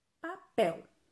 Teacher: Quando você separa papel, você sabe que a sílaba pel é a que você pronuncia com mais força. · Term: sílaba tônica